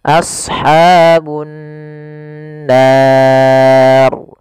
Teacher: Cara membacanya yaitu menahan suara gunnahnya, tidak langsung. Misalkan ashabun nar, harusnya ditahan dahulu.